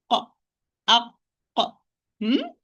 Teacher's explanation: Qaf, it is the back of the tongue or the farthermost part of the tongue with the soft palate.